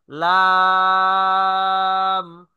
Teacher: জিব্বার আগার কিনারা সামনের উপরের দাঁতের মাড়ির সঙ্গে লাগাইয়া